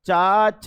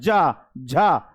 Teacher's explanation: जा जलेबी बोलोगे कंपन आएगा चा और छ में नहीं आएगा बोलो च छ ज झा ज और झा बोलोगे तो कंपन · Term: सघोष